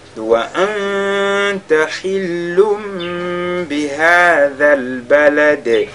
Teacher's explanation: Ici wa anta, nous sakin a suivi de la lettre ta, on fait al-ikhfa. Hillum bi, nous avons tanwin suivi de la lettre ba. Ici on fait al-qalb